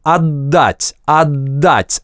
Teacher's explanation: мы касаемся кончиком языка альвеол, начинаем произносить /d/, но до шумного хлопка не доводим. Примерно как по-русски мы говорим "отдать".